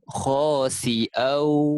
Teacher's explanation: Kita memasukkan tanwin bertemu waw, memasukkan berserta dengung. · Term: idgham bi gunnah